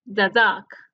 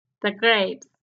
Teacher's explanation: vamos a pronunciar da cuando este artículo va antes de una palabra que que comienza con consonante